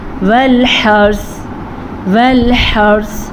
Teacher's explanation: را کو پر پڑھیں گے را ساکن سے پیچھے والے حرف پہ زبر کی وجہ سے